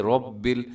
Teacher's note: را موٹی ہوتی ہے، رب ایسے منہ بھر کے آپ نے اس کو پڑھنا ہے